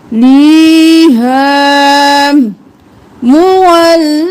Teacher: هُوَ مُوَلِّيهَا، مول اور لی، ول اور لی اور پھر لیہا نہیں کریں گے، لام زیر یا لی، یا مدہ ہے تو ہم ایک الف کے برابر کھینچتے ہوئے لام کو پڑھیں گے، دی، اور ہا کے ساتھ الف مدہ ہے اس کو بھی ایک الف کے برابر کھینچیں گے، ہم لیہا مولیہا۔